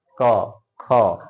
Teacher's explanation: जीभ कहीं टच नहीं कर रहा है, बस बोल रहे हैं, तो कंठ में कंपन हो रहा है, कंठ से आवाज आ रही है।